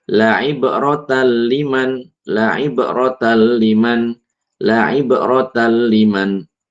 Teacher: Idgham bi ghairi gunnah yaitu ketika nun sukun atau tanwin bertemu dengan lam dan ro. Cara membacanya dileburkan nun sukun ke huruf lam atau ro setelahnya, tanpa disertai dengung.